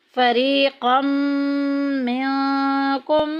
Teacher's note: میم ساکن کے بعد دوسری میم آ گئی، ادغام شفی کا قاعدہ جاری ہو رہا ہے، پہلی میم کو دوسری میں ملا دیں گے